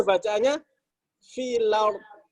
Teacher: Hamzahnya dinakal, dipindahkan. Ya, harokat hamzah dipindahkan ke huruf sebelumnya